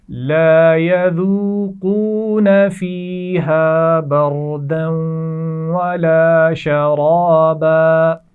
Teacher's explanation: فیہا یا مدہ اور الف مدہ اپنی پہچان کے ساتھ موجود ہیں. بردن، را کو موٹا پڑھنا ہے اور دال کو جب واو سے ملائیں گے تو یہاں غنہ بھی کیا جائے گا. ولا شرابا، یہاں پر را موٹا پڑھا جائے گا.